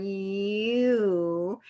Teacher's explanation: we land on ooh when we say you